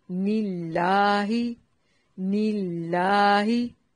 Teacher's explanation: یہاں لفظ اللہ کو باریک پڑھنا ہے کیونکہ اس سے پہلے والے حرف کے نیچے کسرہ یعنی کہ زیر ہے